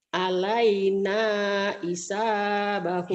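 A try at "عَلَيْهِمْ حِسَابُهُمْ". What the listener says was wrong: Hi, jangan i. Hanya selalu ke i. Hi, jangan i. Alaina hisab. Ya hi, jangan i ya. Hi.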